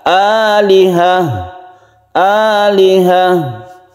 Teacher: fathattin itu adalah milik Ta marbuta ini maka dia tidak dibaca panjang tapi disukun menjadi ha